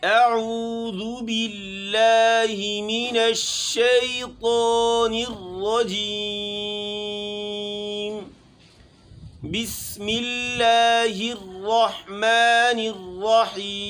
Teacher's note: آخر میں میم ساکن اور نون ساکن کے آنے کی صورت میں اس کو غنہ آنی کرایا جائے، ہلکی سی آواز ناک میں لے جائیں